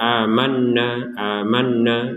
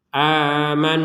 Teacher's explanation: ada Nun bertasdid kita dengungkan 100% aman jadi tidak sekedar amanna amanna ini ada dengungan tapi sedikit